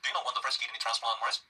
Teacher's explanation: 어떤 새로운 정보를 가르쳐줄 준비가 되어 있음을 나타낼 때도 끝을 살짝 올립니다.